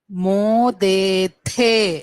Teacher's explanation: యూయం మోదేథే, ఇక్కడ మహాప్రాణం థా వస్తుంది. మోదేథే.